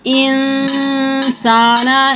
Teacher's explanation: یہاں پر اخفاء ہوگا، یعنی آدھی منہ میں اور آدھی ناک میں آواز رہے گی